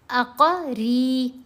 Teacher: را کے نیچے زیر ہے تو باریک پڑھنا ہے اور لمبا کرنا ہے